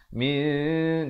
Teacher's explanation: min bunyinya samar di antara nun dan zal. Min dua harakat. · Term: ikhfa hakiki